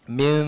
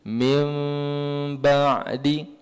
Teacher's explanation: Min rapat tapi tak rapat sangat. Min kan beza dengan mim. Mim tu tak ada keluar angin ni.